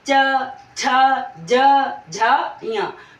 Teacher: मतलब जब भी हम बोलते हैं तो हमारी जिह्वा मुड़कर तालु को स्पर्श करती है। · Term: तालव्य वर्ण